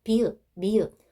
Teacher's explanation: 입술이 붙었다가 떨어지죠? 입술에서 나는 소리입니다. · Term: 입술 소리